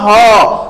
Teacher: ह का जो उच्चारण स्थान होता है वो कंठ होता है